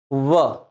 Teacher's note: यानी कि दंत धन ओष्ठ जीभ हमारी दांतों को भी टच करेगी और होठों में भी थोड़ा सा परिवर्तन आएगा।